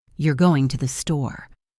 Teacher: You're going to the store? If I say it with my voice going down, it is a statement. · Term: intonation